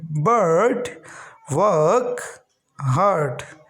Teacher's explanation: ये है अर, जीभ को थोड़ा सा मोड़ के अर